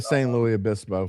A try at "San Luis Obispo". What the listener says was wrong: You got to say the S. You talk pronunciation because the next word starts with the vowel, so you say the S. That's the rule.